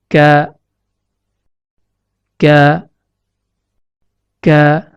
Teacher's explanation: Makhraj huruf kaf terletak pada pangkal lidah yang menempel pada pertemuan antara langit-langit lunak atau yang diistilahkan dengan palatum mole dengan langit-langit keras atau yang diistilahkan dengan palatum durum.